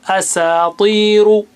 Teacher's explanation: Ta is very thick and high sounding, but kasra will bring it down a little bit. Asatiru. Ru is thick.